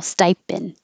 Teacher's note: you don't release the D so you're not going to hear it so you can think of it as stipend but hold the